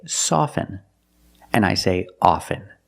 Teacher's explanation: With both words, I don't pronounce a t.